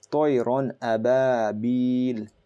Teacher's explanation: So you're not going to do a gunna here. You're not going to hold on to the noon sound here. So you're going to read it Ron ababil.